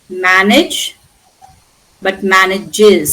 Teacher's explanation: when age plus s, that is in the plural, you have to add an extra syllable